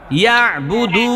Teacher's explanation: দুয়ের মধ্যে পেশের পরে ওয়াও সাকিন, এজন্য একালি পরিমাণ টান